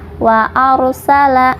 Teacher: Kemudian wa arsala, dibacanya tafhim atau tebal. Kenapa? Karena ro sukun bertemu huruf sebelumnya berharokat fathah ya. Jadi ro itu ada yang dibaca tafhim tebal, ada juga yang dibaca tarkik.